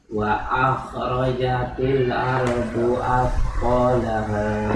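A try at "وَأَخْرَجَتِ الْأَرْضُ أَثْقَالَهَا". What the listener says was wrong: Ya, baru dapat makhraj. Baru makhraj, sifatnya belum.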